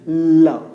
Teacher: लव top देखेंगे जायज है वह ऊपर प्रोटेक्ट करता है और वायु बगल से निकलती है ल अब कर्वे लाइन सीधा नहीं निकलता है बल्कि बगल निकलता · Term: पार्श्विक